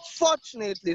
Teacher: So the stress is on the first syllable.